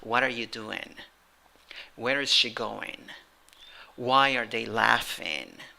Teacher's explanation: the intonation is not rising it's falling